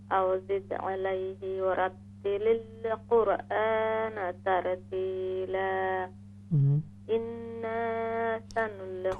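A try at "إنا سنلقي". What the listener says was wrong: تھوڑا سا غنہ اور زیادہ کر دیں.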